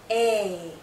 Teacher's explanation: this is a long vowel sound a our mouth is opening more our jaw is lowering